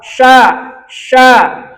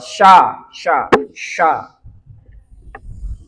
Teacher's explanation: Adapun huruf syin tafasi menyebar suaranya menyebar hingga apa? Sela-sela ujung gigi atas bawah